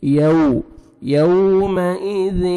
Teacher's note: ہوئیں، ہوئی نہیں پڑھیں گے، ہوئی غلط، ہوئیں، وجوہ ہوئیں یو، واو لین ہے، واو ساکن سے پہلے زبر ہے، نرمی سے ادا کریں گے